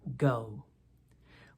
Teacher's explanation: G as in the word go we form this found by pushing our tongue back in our mouth to temporarily block the flow of air letting a little pressure build up and then speaking out with our voice as we release the pressure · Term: hard G